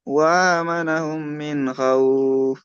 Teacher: হুরু তানবির নুন সাকিনের পরে হুরুফে হালকির মধ্যে খ আসছে, তাই তাড়াতাড়ি পড়তে হবে জাহির করে